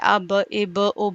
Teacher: ہونٹوں کے تری والے حصے سے، گیلے حصوں سے کیا ادا ہوتا ہے؟ با ادا ہوتا ہے